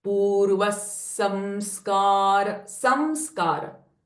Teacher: Now, purvah, this is a visarga here followed by a sa sound. So, visarga sound changes from ha to sa. If I say purvah samskara, it's a wrong way of chanting it.